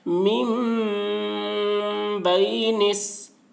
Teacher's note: ہے، حروف شمسی کے شروع میں الف لام ہے اس لیے الف لام کو نہ پڑھیں گے بلکہ بعد والے حرف صاد سے نون کو ملا کر پڑھیں گے